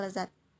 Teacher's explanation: ini termasuk dalam bunyi lamino alveolar termasuk bunyi geseran dan bersuara